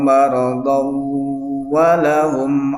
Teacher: karena tanwin ketemu waw, kalau diwasalkan berarti dibacanya idgham